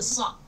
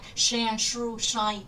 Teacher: từ sock là âm s ngắn, còn lại thì mình đều phải chu môi ra bật thật mạnh.